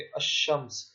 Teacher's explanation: اب ان کو کیسے کیٹیگرائز کیا جاتا ہے، یعنی کہ ان کے درمیان فرق کیسے کیا جاتا ہے دونوں کے درمیان، وہ اس طرح کیا جاتا ہے کہ اگر لفظ کے شروع میں الف اور لام ہو اور لام کے بعد والے حرف پر تشدید ہو تو لام کو پڑھے بغیر ہم جو ہے الف کو لام کے بعد والے حرف کے ساتھ ملا کر پڑھتے ہیں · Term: حروف شمسی